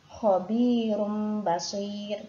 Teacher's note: huruf ro yang terakhir karena waqaf ini sebelumnya ada ya sukun maka ro-nya juga dibaca tarkik atau tipis. Dan contoh yang terakhir khairun ya, huruf ro-nya ini juga karena waqaf maka untuk ro-nya ini juga dibaca tarkik atau tipis karena sebelumnya ada huruf ya sukun.